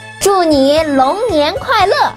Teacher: 祝 fourth tone means wish. 你 third tone. 龙 second tone. 年 second tone. 快 fourth tone. 乐 fourth tone.